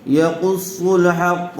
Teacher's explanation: یقص صاد کو پر کیجیے، ہا اور قاف اچھی طرح سے ادا کریں